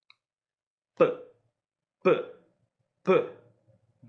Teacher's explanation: So with the letter B, you're going to bop your palm with a fist, kind of like a beat drop. This voiced bilabial plosive gets a downward bop, okay? And a closed fist gently taps on the open palm.